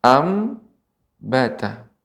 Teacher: Anbata di sini terdapat nun mati ya, bertemu dengan huruf ba. Maka nun diganti atau diubah menjadi huruf mim, ambata. Setelah kita rubah nun jadi mim dan diberikan gunnah, dengungnya.